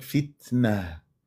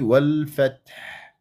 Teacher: انه عندنا صفه لازمه للتاء هي الهمس صفه لازمه لها يعني التاء تهمس ان كانت ساكنه ولا متحركه لكنه تكون واضحه جليه في الساكن